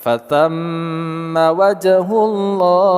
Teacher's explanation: mim bertasydid kita gunahkan atau kita dengungkan